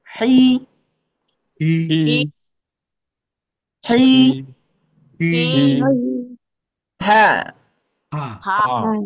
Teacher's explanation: ha itu keluarnya dari tengah-tengah tenggorokan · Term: huruf ha